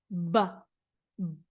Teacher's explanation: We make this sound when we put the lips together. They touch. B. B. And then I let them explode.